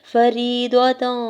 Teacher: یا ساکن سے پہلے را کے نیچے زیر ہے، یا مدہ ہو رہا ہے، 2 حرکت کھینچ کے ادا کریں گے